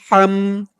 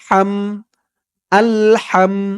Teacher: আলহামদু, হামজা লাম জবর আল, আল, হামিম জবর হাম, হাম, হার আওয়াজটা গলার ভিতর থেকে চিকুন হয়ে বের হবে